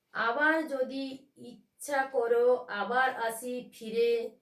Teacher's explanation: আয়ের উপরে দেখো ঝোঁক পড়েছে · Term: শ্বাসাঘাত